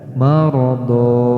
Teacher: tanwin di sini tidak dibaca tanwin, akan tetapi dibaca fathah, kemudian dipanjangkan 2 harokat seperti hukum mad tabi'i. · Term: mad iwad